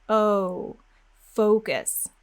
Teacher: glide those lips forward. Make sure you feel them go into a little W sound at the end. · make sure you get those lips moving forward, pushing all the way forward to make that W sound. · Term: O sound